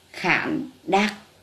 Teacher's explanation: Tiếng khản, vần an, thanh hỏi. Tiếng đặc, vần ắc, thanh nặng.